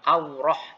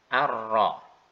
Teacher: Ketika mengucapkan misalnya ar-rahman menjadi bukan aurah tapi arra. Jadi pengucapan huruf ra tebal tidak melibatkan bibir sama sekali, tidak melibatkan bibir yang menguncup sama sekali